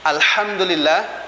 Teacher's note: hurufnya keluar di tengah tenggorokan, kemudian disertai dengan sifatnya, yaitu keluar udara atau hamas